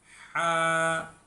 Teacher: ہا جو ہے یہ حلق سے نکلتی ہے، حلق، اور اس کی جو آواز ہے وہ اندر کو چلی جاتی ہے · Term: بڑی ہا